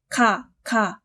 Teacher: 기역은 혀가 연구개에 닿아서 소리납니다.